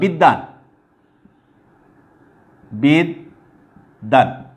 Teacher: ওকে, তুমি দেখো এখানে এই যে দয়ের সাথে ব যুক্ত ছিল, আমরা উচ্চারণে দেখি যে এই বটা কিন্তু নাই, সেটার উচ্চারণ কিন্তু হচ্ছে না। বিদ্যান, আমরা যখন বিদ্যান উচ্চারণ করি সেখানে কিন্তু বয়ের কোনো উচ্চারণ আমরা পাই না · সেই যে বর্ণের সাথে বটা যুক্ত ছিল সেই দটাকে আমরা দুইবার উচ্চারণ করি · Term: দ্বিত্ব উচ্চারণ